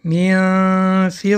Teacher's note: حرف ف حرف استفاله است به این سبب در این مثال اخفا باریک‌تر تلفظ می‌شود